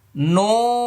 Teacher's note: নুনের শুরুতে ঠোঁট গোল হবে, শেষে ফাঁকা হয়ে যাবে, কারণ শুরুতে পেশ আসছে।